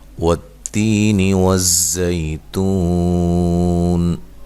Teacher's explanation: والتین والزیتون، والتی واو کو ادا کرتے ہوئے دونوں ہونٹوں کو گول کرنا ہے۔ تی یا مدہ ہے، ایک الف کی مقدار کے برابر لمبا کرنا ہے۔ نون کو لمبا نہیں کرنا، زبر زیر پیش کو لمبا نہیں کیا جاتا۔